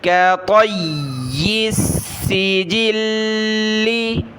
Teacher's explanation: طا کو موٹا کیا، کاف باریک، یا کو سخت کریں گے